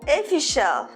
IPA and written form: əˈfɪʃ.əl (official)